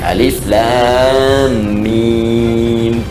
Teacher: Alif harful hawa lam ke lisan mim di bibir. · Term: makhraj